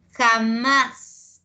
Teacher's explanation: la sílaba tónica es más